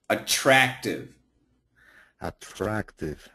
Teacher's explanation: Yeah, that a that short a sound. That if you don't hit that short a sound, it gives you that European flavor.